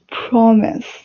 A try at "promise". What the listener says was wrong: Earlier, when you were speaking earlier, you were kind of saying promise. You weren't pronouncing the R. So the correct pronunciation is promise.